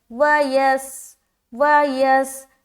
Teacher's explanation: جیسے ہی سین سے ملے گا سیٹی والی آواز ظاہر ہوگی